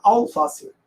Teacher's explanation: o gaúcho enuncia perfeitamente esse alface e um ezinho no final. Se eu sou paulista, eu já falo alface.